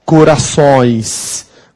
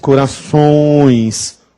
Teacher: digo corações se eu não puser o tio vai ficar corações com o tio corações o som é nasal então o tio é esse nasal e ele pode ser usado